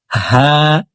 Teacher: হা হলকের শুরু থেকে পড়ব